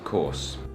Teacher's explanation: the British people basically just make the vowel sound longer, and they don't really pronounce the R at all